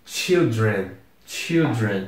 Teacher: E de novo, a pronúncia fica totalmente estranha, porque apesar das primeiras letras serem iguais, C-H-I-L, aqui também é C-H-I-L-D, não se pronuncia mais chai, como se fosse um som de A, vira um som de I mesmo